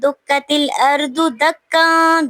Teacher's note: تنوین کے بعد دال آ رہا ہے حروف اخفا میں سے، تو یہاں پہ ہم نے اخفا کرنا ہے، آواز کو ناک میں چھپانا ہے